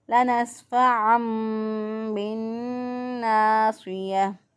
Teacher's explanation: درست ادائیگی ہے بالناصية، نون مشدد پہ ایک الف کے برابر ناک کے اندر آواز کو ٹھہرا کے ادا کرنا ہے بالناصية۔ صاد کو موٹا پڑھیں گے، اگر اس کو باریک پڑھے تو اس کا مطلب کیا ہے سین سے بدل رہا ہے، وہ بالناصية اگر کر دیں تو اس کا مطلب کیا ہے صاد کے بجائے سین بن گیا تو معنی بدل جائے گا، غلط ہو جائے گا۔